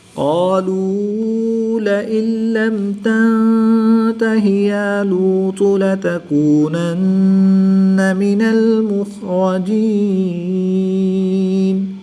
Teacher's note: نون ساکن کے بعد لام حروف یرملون میں سے ہے تو یہاں پر ادغام بلا غنہ ہوگا، یعنی کہ بغیر غنہ کے ادغام کر کے پڑھیں گے